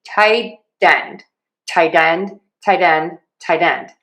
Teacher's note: You also might hear people use a flap T, which sounds like a D.